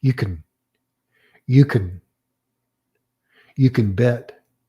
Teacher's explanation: a form of the word can that has been reduced to a monosyllabic consonantal syllable. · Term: weak form